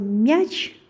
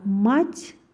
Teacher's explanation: мяч десек, мя деп жумшак айтылып атат. А мать десек, М тамгасы жоон айтылып атат